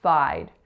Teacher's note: So that vowel is an I, and because it's followed by that voiced D, it's going to be a little bit longer than if it had been a T.